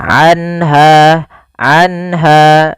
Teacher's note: Yaitu adanya nun sukun bertemu dengan huruf ha. Yaitu cara membacanya adalah suara nunnya dijelaskan suara nun sukunnya. Anha anha dan tidak boleh ditahan anha. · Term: izhar halqi